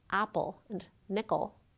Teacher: But in the words apple and nickel, the voiceless stop comes after a stressed syllable and before an unstressed syllable, so it doesn't get aspirated.